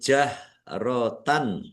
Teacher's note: Fathah tanwin bertemu dengan huruf ha juga izhar dibaca jelas.